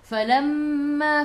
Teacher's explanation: gigi atas menyentuh perut bibir bawah. Mim ada sabdu, tekan ke dalam mim dan dengung 2 harakat wajibul gunnah.